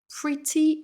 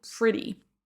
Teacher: pretty avec le t comme l'anglais britannique ou pretty avec un son d au mieux comme l'anglais américain